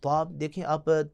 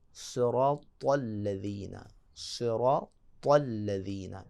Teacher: جب تک آپ کی زبان سختی کے ساتھ دانتوں کو نہیں لگے گی اور پھر اس کے بعد اوپر والے تالو کی طرف جائے گی اور ڈھانپنے کی کوشش کرے گی تو یہ طا موٹا ادا ہوگا